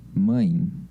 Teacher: no som nasal, como acontece no mã da palavra mãe, o ar sai ao mesmo tempo pela boca e pelo nariz